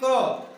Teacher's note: जैसे हम बोलते हैं क तो श्वास क्या निकली, बहुत कम बाहर निकली। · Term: अल्प प्राण